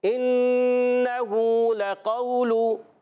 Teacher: ہا الٹا پیش ہو، ایک الف کھینچنا ہے۔ کھڑی حرکات جب بھی آ جائیں، کھڑی حرکات ان کو ایک الف کھینچ کر پڑھتے ہیں، حرف مدہ ہی کی طرح۔